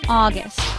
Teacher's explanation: It has two syllables. The stress is on the first syllable.